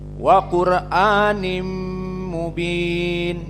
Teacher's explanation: Makhrajnya itu di hidung, di khaysum. Maka Qur'anim mubin itu keluarnya dari hidung. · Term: idgham bigunnah